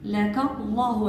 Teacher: اسم الجلالة مفخم مفتوح لأنه مسبوق بفتح